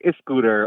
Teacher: when people said like words like English words, they would always add like the is sound in front of them